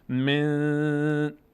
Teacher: من صدا از بینی ادا میشه، مقدار روش وقت صدا رو در بینی نگه میداریم. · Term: اخفا